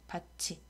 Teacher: 티읕이 이를 만났으니까 구개음화가 된다